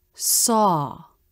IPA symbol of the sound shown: ɔ: